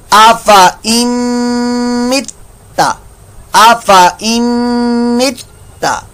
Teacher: नून साकिन के बाद मीम आ रहा है तो इदगाम माल गुन्ना का कायदा हो रहा है, ता जो है मुशद्दद है और ये मुतहर्रिक है ये भी मुतहर्रिक है ये भी मुतहर्रिक है।